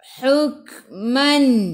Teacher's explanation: Kaf ada sukun, kena baca dengan angin. Sikit sahaja. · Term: Sifat huruf kaf hamas